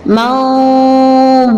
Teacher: Dhad itu harus dibaca secara tebal, dhad dengan dal beda. Andada di situ adalah dal, maka cara membacanya adalah tipis, berbeda dengan dhad.